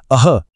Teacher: विसर्ग, जो उच्चारात शेवटी ह सारखा आवाज देतो